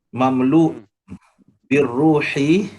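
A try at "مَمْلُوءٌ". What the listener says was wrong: Mamlu apa? Betulkan un. Kan ada hamzah tu tak baca. Apa hamzah tu tak hidup kan? Mamlu apa? Mamluun.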